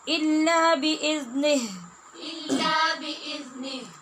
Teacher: نی کہہ کے نہیں چھوڑ دینا آگے جو ہا ہے ہا ساکن کی آواز آنی چاہیے